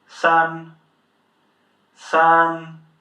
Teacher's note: first tone, high, long, flat.